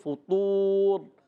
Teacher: فا پر پیش، تو پر پیش، ہونٹ گول ہو جائیں گے